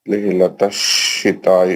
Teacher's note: शिन पे मुशद्दद है, शक्ति के साथ पढ़ेंगे, 2 बार पढ़ेंगे।